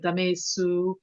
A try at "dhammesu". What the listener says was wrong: Yeah, that was pretty good, though I just would want to hear a little bit more emphasis on the length of this A. Dhammesu, dhammesu.